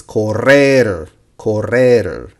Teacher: when the R is in between the word and it's double R, it's rolling tongue.